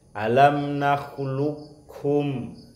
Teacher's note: Jadi kofnya hilang, yang muncul hanya kafnya. Itu namanya idgham mutaqaribain, tapi yang kamil. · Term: idgham kamil